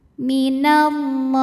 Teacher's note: Kemudian alif lamnya dinamakan dengan alif lam syamsiyah. Karena alif lam menghadapi huruf syamsiyah yaitu lam. Maka alif lam tidak dibaca. · Karena lam barisnya fathah panjang, maka lam dipanjangkan dua harakat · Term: mad thobi'i muqaddar